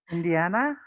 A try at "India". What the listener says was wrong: India. India. One syllable less, all right?